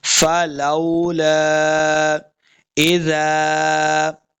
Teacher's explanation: زال کو نرمی کے ساتھ پڑھنا ہے، آگے الف ہے، دو حرکات لمبا کریں گے